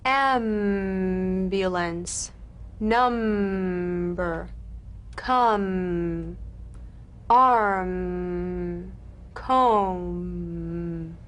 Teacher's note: The M is a nasal labial consonant made with the lips. To feel the M, simply allow your lips to meet very gently and hum.